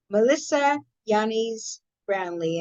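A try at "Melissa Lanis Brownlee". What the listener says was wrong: Yeah, it's the L. It's an L sound. It's from the Philippines, not. Lannis Brownlee, yeah.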